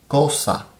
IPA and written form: ˈkosa (cosa)